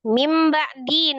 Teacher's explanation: merubah nun sukun menjadi mim sukun disertai dengan ghunah ya disertai dengan dengung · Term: iqlab